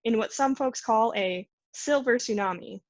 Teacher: the emphatic juncture is characterized by IP level final lengthening a plateau boundary tone